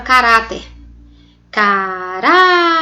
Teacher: Observe que o rá, penúltima sílaba mais forte. Então, vou chamar de paroxítona.